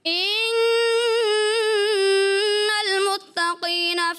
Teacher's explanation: ان المتقین, تا کو باریک رنگنا, قاف آگے پر ہے, تو کیا ہوتا ہے قاف پر کی وجہ سے تا بھی پر محسوس ہوا, ایسا نہیں ہونا چاہیے.